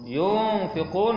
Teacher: Yunfiqun nun mati bertemu dengan fa. Ha, ikhfa hakiki dengung dua harakat. Yunfiqun berhenti di situ menjadi mat arid lis sukun.